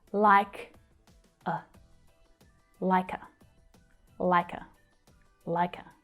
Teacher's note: the k sound from the end of like joins with the vowel schwa. · Both of these vowels are unstressed, so the sound actually reduces to a schwa sound.